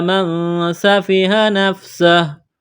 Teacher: نون ساکن کے بعد سین ہے، حروف اخفا ہے، تو یہاں نون ساکن میں آواز ناک میں چھپائیں گے، غنہ کریں گے